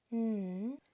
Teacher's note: the sound for n is made with your tongue going to the top of your mouth and it stays there